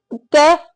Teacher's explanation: अब यदि हम इनमें से देखें तो यदि हम कै की बात करें, इन्होंने कहा अघोष। अब कै अघोष तो होता है बेटा लेकिन अल्प प्राण होता है